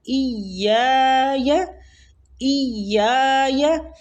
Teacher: حمزہ کو یا کے ساتھ شدت سے ملائیں گے کیونکہ تشدید ہے اوپر